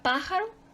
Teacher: su sílaba tónica está en ante penúltima sílaba